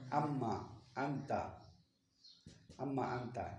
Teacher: نون کو میم میں تبدیل کیا اور میم میم میں ادغام کیا